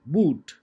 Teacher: when you say boot it was being produced from the back part of your mouth